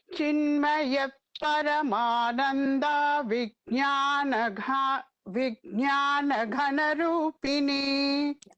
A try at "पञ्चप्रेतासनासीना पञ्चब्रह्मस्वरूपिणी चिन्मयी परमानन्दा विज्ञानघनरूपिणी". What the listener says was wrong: Chinmayi is the nama with the Dirgham there.